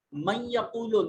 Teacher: نون ساکن کے بعد حروف یرملون میں سے یا موجود ہے تو ادغام بالغنہ ہوگا